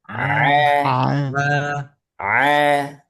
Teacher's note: Ain dia adalah huruf yang tidak keluar dari hidung. Jadi bukan A.